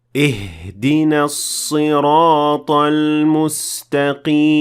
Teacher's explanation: I exaggerated the pronunciation of the ha, which will essentially empty your lungs of air. And while this doesn't change the sound of the ha, or change the meaning of the word, it is not considered to be the proper way to pronounce it, since it might affect the recitation of the rest of the ayah.